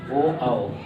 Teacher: तो ये स्वर ऐसे हैं जो जब इसको बोलेंगे तो जीवा जो है, जीभ का हिस्सा जो है पीछे चला जाता है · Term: पश्च स्वर